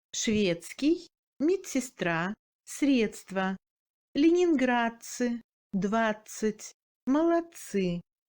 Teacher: La combinaison du D avec le S et le C se prononce comme ц.